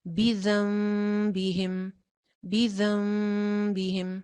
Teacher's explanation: नून साकिन के बाद बा आ गई है इसलिए नून की आवाज जो थी वो मीम में चेंज हो गई थी · اسی طرح سے پیچھے والی آیت میں بھی یہ گزرا ہے، آیت نمبر 11 میں بذنبہم، وہاں پہ بھی نون ساکن کے بعد با آ گئی ہے، تو اسی لیے نون کی آواز جو تھی وہ میم میں چینج ہو گئی تھی. تو زال زبر میم ہم نے زم پڑھا تھا، بذنبہم، بذنبہم. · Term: इकलाब, اقلاب